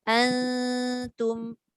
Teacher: nun tu nak pergi dekat ta, tapi lidahnya tidak melekat. Dia tak boleh antum. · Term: ikhfa